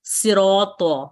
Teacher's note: ہوتا ہے، وہ مکسور ہوتا ہے۔ صراط، تو صراط المستقیم میں صاد کی جو شدت تفخیم ہے وہ کافی کم ہو جاتی ہے کیونکہ یہ کسرہ کے ساتھ پڑھا جا رہا ہے